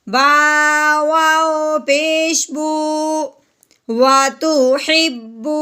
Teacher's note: واؤ ساکن سے پہلے پیش آ جائے تو اسے ایک الف کے برابر لمبا کرتے ہیں۔ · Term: مد